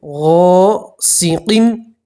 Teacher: غین کے ساتھ الف مدہ ہے، اس لیے الف مدہ میں ایک الف کے برابر کھینچ کر پڑھیں گے